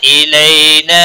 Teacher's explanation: ان نون مشدد پر گنہ ہوگا. الی یا لین ہے تھوڑا نرمی کے ساتھ کھینچ کر پڑھیں گے